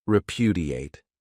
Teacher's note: This verb has four syllables, and the stress is on that second syllable